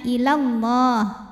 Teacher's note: Alifnya alif bengkok ya, panjang dua harokat kalau berhenti ila. Namun jika wasal maka pendek lamnya ilallah, gugur alifnya, namanya takhallus bil hadfi.